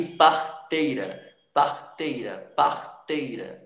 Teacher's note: O i também está bem fraquinho, o e tem mais destaque, porque o e tem som de vogal e o i tem som de semivogal.